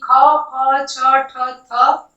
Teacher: महाप्राण हो गया। विवार श्वास अघोष और इसका बाह्य प्रयत्न महाप्राण होगा।